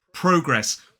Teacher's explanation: 2 syllables, the stress is on the first, so it's progress